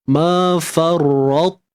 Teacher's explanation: Tebal ta tanpa qalqalah, selesai daripada itu terus sebut ta yang berbaris hadapan. Hujung lidah jangan ubah. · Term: idgham